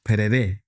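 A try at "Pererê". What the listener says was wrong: No, Perere. There's a little accent in the last E. Perere. Perere.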